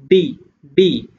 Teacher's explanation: এই যে ডি উচ্চারণ করো, ডি উচ্চারণ করতে গেলে তোমার জিহ্বাটা উপরের তালুতে লাগতেছে